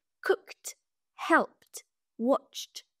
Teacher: Après une consonne sourde, puis une consonne qui ne fait pas vibrer nos cordes vocales, on prononce le ED final comme une sorte de T.